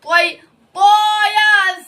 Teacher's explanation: یا لین کو نرم آواز کے ساتھ جلدی اور معروف پڑھیں گے